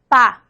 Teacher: Entonces, por ejemplo, la P es bilabial. Pa, pa. Involucra ambos labios.